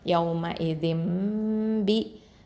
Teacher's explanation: நூன் சுக்குனா மீமாக மாற்றிடுவோம். அப்போது யௌம இதிம் அப்படின்னு ஒன்றாவும் கொடுத்து ஓதணும். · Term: இக்லாபு சட்டம்